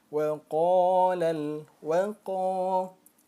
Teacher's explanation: ada fathah bertemu dengan alif maka dia termasuk Mad Thobi'i lagi nah panjangnya dua harakat